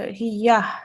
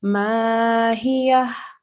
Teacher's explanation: you have to sound the ha because it's joining onto the ya. There is a slight ha sound there.